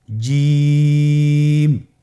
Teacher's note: আপনারা জিহ্বার মধ্যখানটা লক্ষ্য করুন এবং তার বরাবর উপরে তালুর সঙ্গে লাগান, এরপর হরফটি উচ্চারণ করুন, দেখবেন হরফটি শুদ্ধভাবে উচ্চারিত হবে।